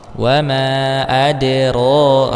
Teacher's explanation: Wama adro. Di sini sukunkan dulu huruf dalnya, maka munculkan sifat qalqalahnya